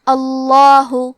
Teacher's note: یہاں لفظ الجلالہ مطلب کلمت اللہ کے لام کا حکم ہے. تفخیم مطلب ہم حرف اللام کو موٹی آواز میں پڑھیں گے